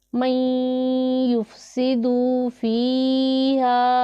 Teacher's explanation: من یفسد فیہا، نون ساکن ہے، اس کے بعد حروف یرملون میں سے یا آ رہا ہے تو یہاں پر ادغام ہوگا